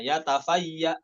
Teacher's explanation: bukan yatafayya'u, bukan jadi mad badal, namun disukunkan